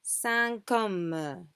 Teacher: but we we pronounce it link to the next word sancome we pronounce the t but we just link it to the next word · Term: la liaison